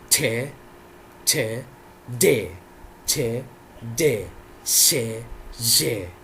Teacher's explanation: tip of the tongue goes towards the alveolar ridge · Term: alveolar sounds